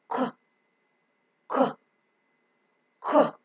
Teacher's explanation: The back of the tongue exactly touches the soft palate. The extreme tip of soft palate is called velum. · The back of the tongue touches the velum so that the air coming out from the lungs is held up over there in the oral cavity because it is completely blocked. The air cannot pass through the nose because the soft palate is raised to shut off the nasal passage of air.